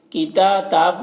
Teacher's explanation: کتاب میں کھڑا زبر ہے، تا میں ایک الف کے برابر کھینچ کر پڑھیں گے